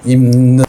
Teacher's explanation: 입는 우리 형제 미음으로 해. 그래서 비읍이 미음으로 바뀌는 거죠. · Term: 비음화